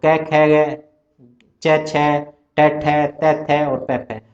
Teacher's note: तो विवार श्वास अघोष ये होता है वर्गों के पहले और दूसरे अक्षर का।